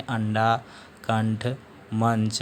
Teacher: इसमें जो हवा होती है, जो वायु होती है, वो मुख और नाक दोनों के माध्यम से बाहर निकलती है, जबकि अनुस्वार के उच्चारण में हवा सिर्फ नाक के माध्यम से बाहर निकलती है